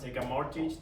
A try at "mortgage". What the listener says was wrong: How do you pronounce this word? Mortgage. Do not pronounce the T. Mortgage.